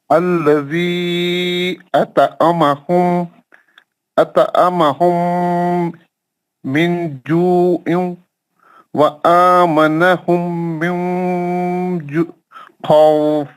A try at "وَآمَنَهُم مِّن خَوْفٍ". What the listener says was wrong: نہیں آمنہم، پھر میم کا غنہ کری. نون کا غنہ نہیں کریں گے، نون مشدد نہیں ہے نا. آپ نون کا غنہ بھی کر دیا نا، نون مشدد نہیں ہے نا، نون تو خالی جزم ہے نا. نون کو جلدی پڑھنا کیوں مشدد ہے.